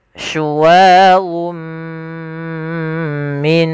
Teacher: Pada lafalnya ada n dengan jelas, karena bertemu dengan mim, n-nya masuk kepada huruf mim dan diganti.